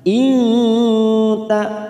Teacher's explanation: Man, nun sukun bertemu hamzah idhar halqi, kita baca jelas. Man inta, nun sukun bertemu ta ikfa akrob, kita samarkan 3 ketuk atau 3 harokat.